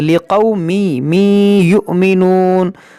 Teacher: یہاں پر بھی ادغام ہوگا, تنوین کے بعد یا ہے